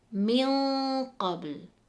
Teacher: where we can hear that Noon has a heavier nasal sound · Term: Ikhfa